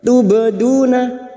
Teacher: ba sukun yang mati asli di tengah kalimat qalqalah sugra.